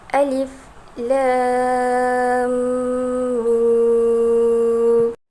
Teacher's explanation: Huruf mad bertemu dengan sukun adalah mad lazim, harfi, mukhaffaf dan dibaca dengan 6 harakat.